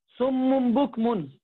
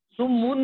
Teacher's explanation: نون ساکن اور تنوین کو میم ساکن سے بدل کر گننا کرنا، یاد رکھنا گننا کرنا ہے.